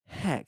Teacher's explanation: notice there's a puff of air on the front of it. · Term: aspiration